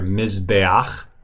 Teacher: that's the furtive patak. It's pronounced right before the het.